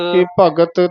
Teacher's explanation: ਭਗਤ ਤਤੇ ਦੇ ਨਾਲ ਹੀ ਬੋਲਣਾ ਭਗਤ ਧ ਨਹੀਂ ਬੋਲਣਾ ਹੈ ਤ ਬੋਲਣਾ ਹੈ